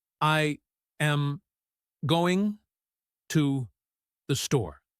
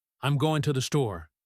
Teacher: The going to becomes gonna. The to the links together.